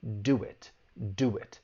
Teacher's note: what's called intrusion intrusion is when a sound is added so you hear that w which is a consonant sound and now we can link it with the vowel sound in it